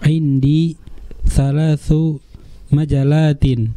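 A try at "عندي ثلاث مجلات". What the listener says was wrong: Ada tasdidnya di huruf lamnya. Coba diulangi sekali lagi.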